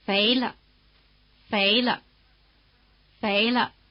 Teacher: after the rising tone the pitch of the neutral tone is in the middle